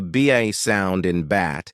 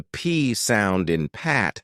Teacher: the difference between the BA sound in bat and the P sound in pat lies in whether your vocal cords vibrate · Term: voiced and voiceless sounds